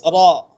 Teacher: hujung lidah bertemu dengan gusi gigi kacip atas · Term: huruf ra